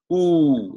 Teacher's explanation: if you say ooh you actually put your lip like a round circle